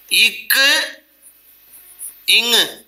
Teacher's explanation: நாவின் முதற்பகுதி அன்னத்தின் முதற்பகுதியை பொருந்துவதால் உண்டாகும் எழுத்து